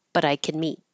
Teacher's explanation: the positive can gets really short to just kin